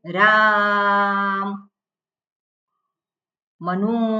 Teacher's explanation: કોઈકને બૂમ પાડવી હોય ત્યારે જે સ્વર જે છે એ લંબાઈ જતો હોય છે